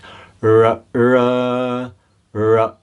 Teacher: The tongue touches the palate, like curls back and touches the palate. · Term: murdanya